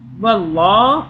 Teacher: واللہ، اللہ کو موٹا پڑا، پیچھے زبر آ رہا ہے واو پر ، واللہ، ہا پیش ہو، واللہ لا، لام کھڑا زبر لا،